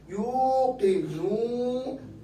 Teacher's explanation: یہاں واو ساکن پیچھے پیش ہے، واو مدہ ہے، آواز ایک الف، کیونکہ اس کے آگے بھی حمزہ سکون نہیں ہے.